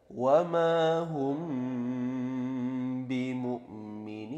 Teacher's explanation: Di situ ada mim mati bertemu dengan ba, maka dia menjadi bacaan ikhfa syafawi, dibaca mendengung, panjangnya 2 harokat.